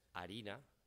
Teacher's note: La aspiración y pérdida de F, que ya se estaba dando en la península